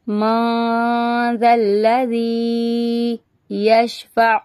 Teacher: نون ساکن کے بعد ذال آ رہا ہے، تو یہاں پہ گنہ کریں گے